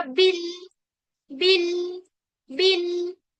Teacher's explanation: बा के लिए हम अपनी जुबान को बिल्कुल फ्लैट कर लेंगे क्योंकि बा जो है वो बारीक हर्फ है